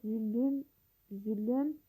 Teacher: Orda yenə bir ü sait əlavə olunur tələffüzdə.